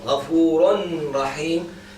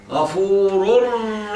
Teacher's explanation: When I carry on, the noon is going to be gone completely by the ra.